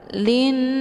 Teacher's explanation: huruf lamnya langsung dileburkan ke dalam huruf nun dengan cara ditekan kemudian ditahan lebih kurang dua kali ketukan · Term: ghunah musyad dadah